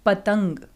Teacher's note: त के बाद जब हमारी आवाज आ रही है तो वो नाक से निकल रही है। तो इन्हीं को हम हिंदी व्याकरण में क्या कहते हैं, अनुस्वार कहते हैं, जिनकी ध्वनि, जिनका उच्चारण करते समय हवा कहाँ से निकलती है, नाक से निकलती है।